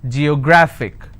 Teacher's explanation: since it's ending with ic i will stress on graph